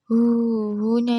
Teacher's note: mad silah qasirah karena ada hu yang dibaca panjang gitu. Kemudian ee pada ayat keet7 fahua fi.